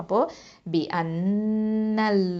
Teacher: அல்லாஹ் அப்படிங்கிற இந்த லஃப்துல் ஜலாலா லாமை வந்து தஃப்ஹீமாக ஓதணும், அதாவது வல்லினமாக ஓதணும். அப்போது பி அன்னல்லாஹ.